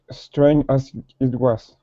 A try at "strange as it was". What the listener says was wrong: Now give me that J. so when you pronounce that, okay, you're saying strain. Then it's like you're saying the word jazz.